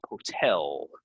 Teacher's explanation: So the stress is on the last syllable, the second syllable, right?